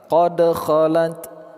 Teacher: Huruf dal sukun pada tengah kata, qolqolah sughra.